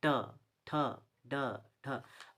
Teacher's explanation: अब मूर्धन्य का मतलब देखिएगा, जैसे कि इसमें देखिए ऊपर में जीभ जो है थोड़ा सा इसको बोलने में पलटता है, गोल गोल घूमता है